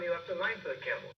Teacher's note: he's not dipping real low until he gets to the end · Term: rise and fall